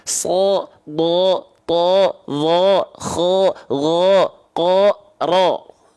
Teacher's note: Kalau dia huruf tebal dibaca dengan vokal apa? Dengan vokal O. · huruf ro ketika fathah nggak dibaca ra ya, tapi dibaca ro karena dia dibaca harus tebal. Tapi kalau vokalnya A ketika fathah dia huruf yang tipis.